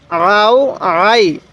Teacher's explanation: এরপরে আইন ওয়াও জবর আও আইন ইয়া জবর আই আও আই আইনটা উচ্চারণের সময় গলার মধ্যে একটু চাপ দিলে আইনটা সহি উচ্চারণ হবে